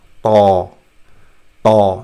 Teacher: Now Ta is the same, except that the tongue touches the most part of what is called as hard palate here in this diagram.